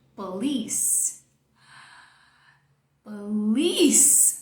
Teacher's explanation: Essa primeira parte, como não é forte, reduziu para o schwa, que é fraco. Então, toda a sua força vai ficar aqui no final e você vai dizer police.